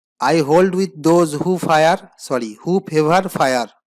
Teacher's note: Here the vowel sound O has been repeated in successive words beginning with those and ending with favor. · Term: assonance